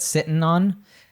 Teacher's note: when we have these words ending in -ing we will drop the G